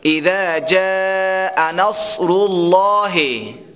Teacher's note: ما قبل لام اسم الله زمه آمده، پیش آمده. وقتی که پیش آمد یا فتحه آمد، لام اسم الله پر خوانده میشه